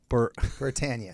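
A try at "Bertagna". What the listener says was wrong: Bertania. There's a G in there.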